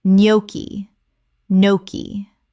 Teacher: The G is completely silent.